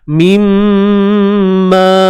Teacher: mim musyaddadah. Mim yang bersabdu kita kena dengungkan dengan kadar 2 harakat. Mimma, ma 2 harakat, di sini ada alif mad.